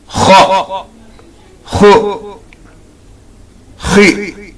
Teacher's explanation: Khu, kha is from the front of the throat.